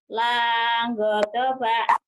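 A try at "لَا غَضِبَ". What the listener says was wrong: Langodoba. Jangan langodoba. Lagodoba ya. Lanya panjang. Lagodoba.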